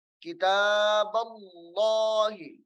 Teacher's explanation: جلالت اللہ کے لام کو موٹا کر کے پڑھنا ہے